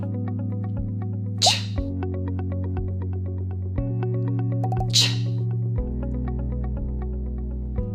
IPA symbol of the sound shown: tʃ